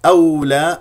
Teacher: الواو الساكنه نضم الشفتين فيها